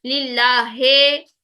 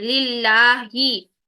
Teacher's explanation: जो जेर की कसरा की साउंड होती है वो ई की साउंड में होनी चाहिए, लिल्लाहे नहीं होना चाहिए, लिल्लाही, ठीक है।